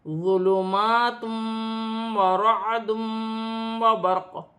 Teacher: 2 پیش کی تنوین کے بعد واو مشدد آ رہی ہے، تنوین میں غنہ بھی کیا جائے گا، ملا کر بھی پڑھا جائے گا، را موٹی پڑھی جائے گی۔ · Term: ادغام مال غنہ